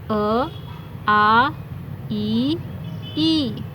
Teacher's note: यहां हवा मुंह और नाक दोनों से बाहर आई निर्ण नासिक इनके उच्चारण में हवा सिर्फ मुंह से बाहर निकलती है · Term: निर्नुनासिक